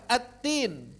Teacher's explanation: diidghamkan at-tin karena saking dekatnya makhraj